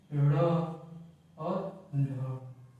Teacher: ऐसे व्यंजन जिनका उच्चारण करते समय जीभ मूर्धा से टकरा कर झटके से नीचे आए, उसको हम लोग द्विगुण व्यंजन कहते हैं। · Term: उत्क्षिप्त व्यंजन